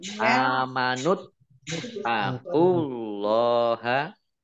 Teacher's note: Allahnya dibaca tebal karena harokat di depannya domah